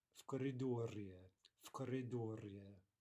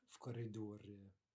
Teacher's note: Devoicing there to an F